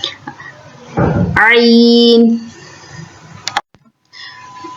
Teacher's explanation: middle area سے، ہمارے حلق کا جو مڈل ہے وہاں سے عین ادا ہوتا ہے